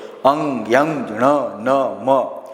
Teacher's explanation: વ્યાખ્યા શું જે વ્યંજનનો ઉચ્ચાર કરતા વાયુ વાયુ એટલે કે હવા વાયુનો થોડોક ભાગ નાકમાંથી પસાર થાય આ નાકમાંથી પસાર થાય તેને અનુનાસિક વ્યંજન કહેવામાં આવે છે તમે